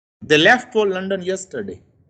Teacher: You can see, when I go towards the end of the sentence, my voice is lowered. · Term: falling intonation